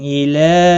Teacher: इला यहाँ पर मद्दे मुनफसिल है, 3 अलिफ के बराबर खींच कर पढ़ेंगे।